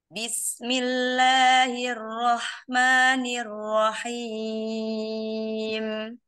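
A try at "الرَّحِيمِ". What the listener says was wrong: Ya, coba kasroh rahang turun ke bawah. Bukan ke samping ya, pindah. Mungkin sedikit terlihat seperti ke samping ya. Turun ke bawah. I, coba I dulu. I. I. Rahim.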